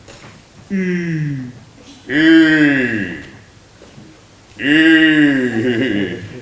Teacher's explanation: en rapprochant les dents sans les joindre entièrement et allongeant les deux lèvres en dehors, les approchant aussi l'une de l'autre sans les joindre tout à fait.